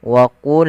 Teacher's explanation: Pada lafal wa qulna ya, qa salah satu huruf yang dia kita namakan dengan salah satu sifatnya adalah sifat huruf isti'la, yang mana pangkal lidah kita harus kita angkat sehingga terdengar suara qa-nya menebal